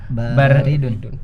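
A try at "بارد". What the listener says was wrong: Ya, banyak yang panjang. Baridun. Ulangi.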